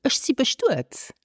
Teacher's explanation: in natural spoken luxemburgish we would drop the final n of Zin because we have an N rule you can check